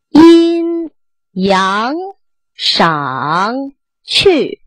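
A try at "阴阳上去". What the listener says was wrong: 这 个 去 没 挂 住 ， 它 不 够 高 了 。 阴 阳 赏 去 。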